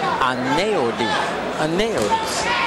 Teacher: There's an L sound that comes out from the EU